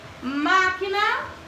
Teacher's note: Proparoxítona é a antepenúltima mais forte da palavra